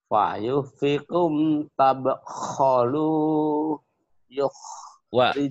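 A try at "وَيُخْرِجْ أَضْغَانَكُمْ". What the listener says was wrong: Wa, wa, Wanya ketinggalan.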